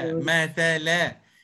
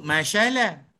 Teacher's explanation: huruf ta mesti keluarkan hujung lidah